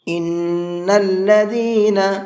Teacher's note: نون کے اوپر تشدید ہے تو اس میں غنہ کریں گے